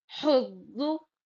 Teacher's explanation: ایسی زا کی آواز نہیں آنا اس میں، سیٹی کے جیسا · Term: ضاد